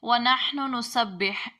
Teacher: پہلے نون کا دوسرے نون میں ادغام ہو جائے گا